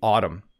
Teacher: You can just ignore the N at the end of the word. Don't try to pronounce the M and N together. It's simply autumn.